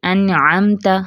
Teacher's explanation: مثلا کبھی تو حروف کا اظہار ہو رہا ہوتا ہے، ایک طریقہ اظہار کا ہے، جیسے انعمتا، ہم اس میں کیا کر رہے ہیں؟ نون ساکن کے بعد عین آ گیا، ہم اس کا اظہار کر رہے ہیں۔